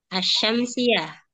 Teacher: tidak diucapkan huruf lam pada isim yang didahului alif lam. Tetapi cara pengucapannya adalah langsung masuk pada huruf yang berada setelah alif lam. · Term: idgham syamsiyah